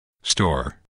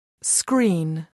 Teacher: Natives simply don't have aspirated p, t, k after S in the same word. You might think of it as the strong English S requiring so much breath that there isn't enough left over to aspirate a following sound in the same word.